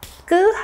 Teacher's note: 끄는 성대를 조금 긴장시켜서 강하게 내는 그런 소리